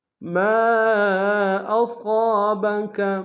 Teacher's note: ما کے ساتھ الف مدہ ہے، الف مدہ کے اوپر مد منفصل ہے، کم سے کم 2 سے ڈھائی الف نار میں کھینچے گی۔ صاد کو موٹا ادا کریں گے، صاد کے ساتھ الف مدہ ایک الف نار میں کھینچے گی۔